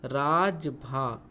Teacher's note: यहाँ देखिएगा रा दीर्घ है, जा ह्रस्व है और भा क्या है, दीर्घ है